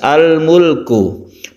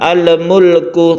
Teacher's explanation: Izhar artinya jelas, maksudnya adalah al ini harus dibaca jelas, al-mulku, dan lam itu bukan qalqalah, jadi kita membacanya tidak boleh memantulkan huruf lam, al-mulku, tapi lam itu tidak memantul. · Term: izhar qamariyah